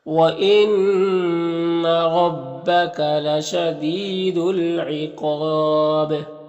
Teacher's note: قاف حروف مستعلیہ میں سے ہے اور یہاں پر الف مدہ ہے۔ یہاں پر وقف کریں گے تو با کا زیر سکون سے بدل جائے گا تو پھر با میں قلقلہ ہوگا اور مد عارض وقفی بھی ہوگا